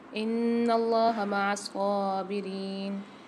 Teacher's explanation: نون میں مشدد ہے، یہاں غنہ کریں گے اور اللہ کے لام کو موٹا کر کے پڑھیں گے۔ اب میرے ساتھ پڑھیے، یا ایہا الذین آمنوا استعینوا بالصبر والصلاح ان اللہ مع الصابرین۔